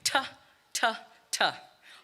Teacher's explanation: The first letter, T, is a stop, disrupts airflow. Quick, sharp, staccato.